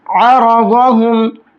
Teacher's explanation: را اور ضاد دونوں کو پر کر کے موٹا کر کے پڑھیں گے۔